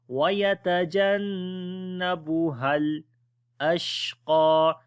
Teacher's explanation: On the sheen we make tafashi quality, and also this qaf we read in heavy sound.